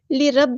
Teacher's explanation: را ہمارا heavy letter ہے، پورا ادا کریں گے